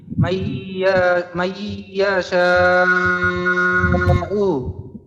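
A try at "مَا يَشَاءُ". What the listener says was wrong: আচ্ছা আপনার গুন্নাও ঠিক ছিল, তারপর 4 আলিফ টানও ঠিক ছিল, কিন্তু মাঝে দিয়ে ইয়াটা একটু লম্বা হয়ে গেছে। ইয়াটাকে কিন্তু একটু লম্বা করা যাবে না, ইয়ার জবর উচ্চারণটা তাড়াতাড়ি করতে হবে, কারণ আমরা হ্যাঁ এইখানে মাইয়াশাউ, ইয়া দ্রুত শেষ করে ফেলতে হবে।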